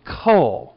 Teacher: stop consonant which is like the K we're going to usually say Co with that little H or Puff of air or aspiration after the k sound